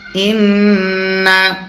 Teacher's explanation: নুনে যদি তাসদীদ হয় গুণনা করা ওয়াজিব হয়